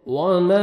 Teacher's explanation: वाव आ रहा है, लिप्स को राउंड में लेके जाएं।